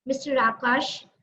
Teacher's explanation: So when I started with the statement, Mr. Akash, I put more weight. I had a higher tone of speaking the sentence.